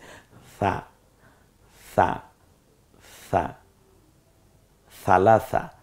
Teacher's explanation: জিহ্বার আগা সামনের দাঁতের আগার সাথে মিলিয়ে আপনি স বলুন, দেখবেন নরম হয়ে গেছে। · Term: নরম আওয়াজে